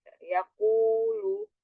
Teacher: Yaakulu yaakulu eh huruf Q ingat di belakang di belakang pangkal lidah bertemu dengan langit-langit yang lembek